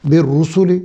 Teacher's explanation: सीन को सिटी की आवाज़ के साथ, लाम को बारीक।